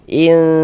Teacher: Kemudian di bagian in itu suaranya itu kita gunahkan, kita dengungkan sehingganya kita tahan sejenak. In kira-kira sepanjang dua harakat. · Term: ikhfa hakiki